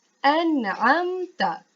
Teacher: Bacaan yang betul ialah an'amta. Tidak perlu dengung tetapi baca dengan jelas dan terang.